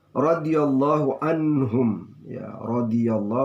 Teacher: ro ini adalah ro tafkhim, ro tebal. Radiyallahu, Allah ini adalah lam tafkhim, dibaca tebal.